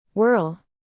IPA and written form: wɜrl (whirl)